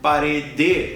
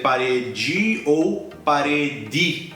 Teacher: essa letra e aqui no final de parede ela não é a sílaba tônica